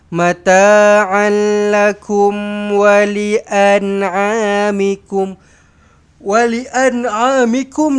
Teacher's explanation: Um matikan mim mati di sini. Izhar syafawi jelas dan terang.